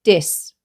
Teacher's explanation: words with voiced th sounds have a D, such as dis rather than this